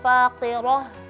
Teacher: ha yang di akhir itu tipis jangan sampai terpengaruh dengan huruf ro yang tebal sebelumnya